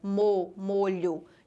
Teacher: a primeira pronúncia, a letra O saiu fechada